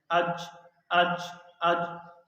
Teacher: یہ ٹکرا رہا ہے زبان کا درمیانی حصہ۔ جب شین ادا کرتے ہیں ٹکراتا نہیں ہے، اوپر جاتا ہے تھوڑا سا۔ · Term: جیم